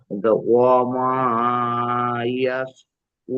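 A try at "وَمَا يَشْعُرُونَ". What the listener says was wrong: ওমা ইয়াশউরুন, এখানে আয়াত করছেন মানে এই নুনকে কে আমরা সাকিন করে দেবো, আর জাবার পড়বো না। ইয়াশউরুন।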